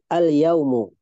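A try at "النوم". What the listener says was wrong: An-naumu. Naum, bukan yaum. Naum, nun.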